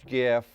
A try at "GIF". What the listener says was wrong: GIF. It's GIF. It's GIF. Do not. Do not pronounce it with a J. I don't care what people say. G does not turn into J. That's what I learned in English class. There's no such thing as a silent G.